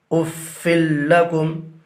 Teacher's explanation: یہاں پر بھی تنوین کے بعد حروف یرملونہ میں سے لام ہے، لہٰذا ادغام بلا غنہ ہوگا